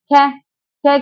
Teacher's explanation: ख हमारा महाप्राण तो होता है लेकिन अघोष होता है तो यह भी नहीं हो सकता क्या है हमारा अल्प प्राण